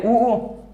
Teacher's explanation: ऊ, यानी कि इनके अंदर सीधे पता चल रहा है कि ऊ और ऊ, होठ आगे आ रहे हैं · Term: ओष्ठ